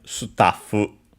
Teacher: Notice the double consonant in Japanese because, of course, you technically write it also in English with a double F, but of course it's not pronounced in English. It becomes pronounced in Japanese.